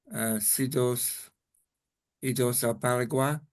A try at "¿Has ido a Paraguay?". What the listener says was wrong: I heard CEDOS, EDOS, all types of extra letters.